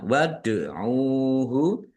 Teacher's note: Dal sukun bacaan qalqalah dibaca memantul ya. Ditampakkan pantulannya waduhu. · Ditampakkan pantulannya waduhu. Ain dumah wawu sukun mad thobi'i panjang dua harakat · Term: kolkolah